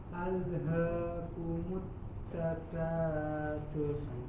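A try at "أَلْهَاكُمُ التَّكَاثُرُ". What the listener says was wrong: Jelas huruf ro-nya.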